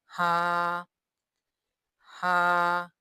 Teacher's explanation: हा, हा, ये हलक से अदा होगा